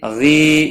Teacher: یا مدہ ہے، ایک الف کے برابر کھینچ کر پڑھیں گے۔ غین حروف مستعلیہ میں سے ہے، پور پڑھا جائے گا۔